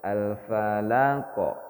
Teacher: ini enggak ada jeda dia langsung alfalaqo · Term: Qalqalah